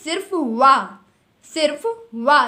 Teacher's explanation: तो कंठ और तालु से मिला करके ए ऐ, कंठ और ओष्ठ से मिला करके ओ औ, दांत और ओष्ठ से मिला करके सिर्फ वा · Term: दंत्योष्ठ